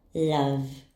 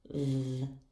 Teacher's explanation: Doesn't our throat vibrate when we pronounce v? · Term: voice sounds